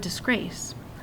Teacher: to be stressed so the word disgrace I can't change it it has to be the second syllable grace that's emphasized